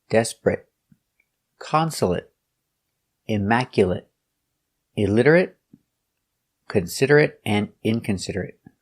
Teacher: The pronunciation is it, not ate because they're not verbs.